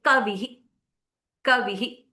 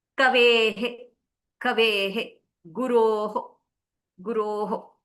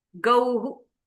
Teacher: The visarga takes the sound of the swara that it was sitting with.